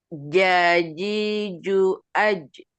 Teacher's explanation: Huruf jim keluar dari tengah-tengah lidah yang menempel pada langit-langit mulut.